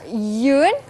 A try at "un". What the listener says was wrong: Kalau dia macam ni, dia bukan yun dah. Dia kalau ada i kat belakang tu bunyi dia yun. Kalau dia u n dia hanya bunyi sengau sikit, hengau.